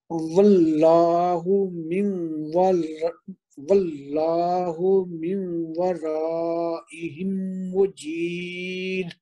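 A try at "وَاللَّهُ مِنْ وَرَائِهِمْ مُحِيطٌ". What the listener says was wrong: نہیں یہ ہا ہے. یہ جیم نہیں ہے، ہا ہے، محیط ہے.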